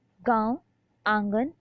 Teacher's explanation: अनुनासिक स्वर ऐसे स्वरों का उच्चारण नाक और मुंह से होता है और उच्चारण में लघुता रहती है।